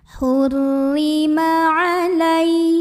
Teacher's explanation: Ra kita bunyikan secara tarqiq karena barisnya kasrah. Maka bacanya tipis, lidah datar, tidak perlu diangkat.